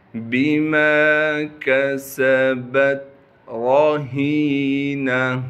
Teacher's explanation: را کو موٹا کر کے پڑھیں گے کیونکہ را پر زبر ہے، ہا کو صاف کر کے گلے سے نکالنا ہے، گلے کا وہ حصہ جو سینے کی جانب ہے۔